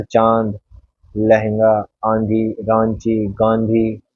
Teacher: अनुनासिक का उच्चारण मुख और नासिका दोनों से होता है। हमारे मुख से भी और नासिका दोनों से ही वायु निकलती है बाहर, प्राणवायु।